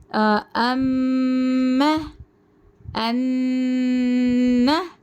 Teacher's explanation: हम की जो आवाज है ना उसको नाक के बांस में लेकर जाकर रोक रहे हैं · यह गुन्ना नाक की जड़ से होता है